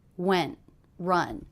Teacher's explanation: Those are the 2 words that have the most shape in the voice, the most length. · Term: stressed words